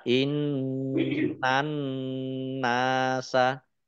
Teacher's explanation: Alif lam samsiah karena tidak dibaca langsung masuk ke huruf berikutnya yaitu nun ditandai nunnya ada tasdidnya. Nun tasdid dibaca gunnah atau mendengung ditahan 2 harokat.